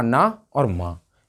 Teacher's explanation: अनुनासिक वर्ण है, नाक और मुंह से बोले जाते हैं